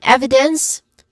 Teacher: evidence starting with e the stressed syllable which has a short e sound and then followed by a short e sound.